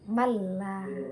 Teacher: jadi masuk tanpa dengung, seakan-akan berharkat tasydid. Malla, nun sukun bertemu dengan lam.